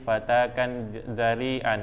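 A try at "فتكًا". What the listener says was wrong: Fatakan, jadi tidak panjang. Jadi seakan-akan itu ada alif, jadi begitu. Fataka ada alif kan? jadi hilang kiwazannya. Kan ini fataka fiil, kemudian fatkan isim. Masdar. Tanwin.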